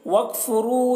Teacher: وکفرو، یہاں پر را کو پور پڑھیں گے، را کے اوپر پیش ہے